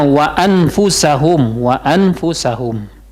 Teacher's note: an itu Kalau jelas wa anfusahum Jelaskan nunnya ya Wa anfusahum Nah karena nun sukun itu bertemu huruf Fa dia jadi ikhfa